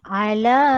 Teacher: Mad asli alif dibaca dengan panjang 2 harakat